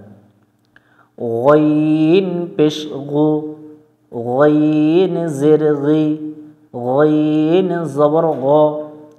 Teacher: জিহ্বার গোড়া থেকে এটা আমরা মোটা করে পড়ব, তবে একটু সতর্ক হয়ে পড়তে হবে।